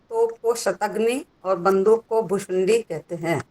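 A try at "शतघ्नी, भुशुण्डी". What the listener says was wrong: अब देखो, आपने एक के श को ठीक बोला और एक के श को गलत बोल दिया। पहला वाला क्या बोला था? पहले बोले शतघ्नि।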